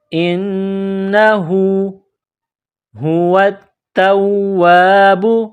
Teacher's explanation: گول ہا ہے، منہ سے ہوا نکالنے کی طرح اس کو پڑھتے ہیں۔ واو کو تا کے ساتھ پلس کرنا ہے، تا میں سختی کرنی ہے، تا کو واو کے ساتھ پلس کرنا ہے۔